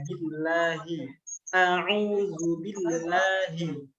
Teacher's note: Lamnya tipis, habis itu dibuka mulutnya.